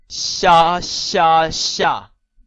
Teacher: 咁你留意佢一个长音嚟嘅，即係要将呢个音读两次